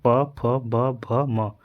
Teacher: प फ ब भ म तो यह हमारे ओठों को टच कर रहा है